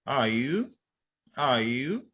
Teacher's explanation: So it is expected that the you should go up. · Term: rising